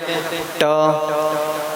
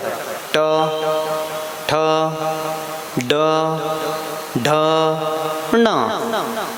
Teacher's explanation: जैसे आप बोलते हैं ट, तो जीवा का अग्रभाग मुड़ेगा और फिर ऊपर टकराता है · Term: मूर्धन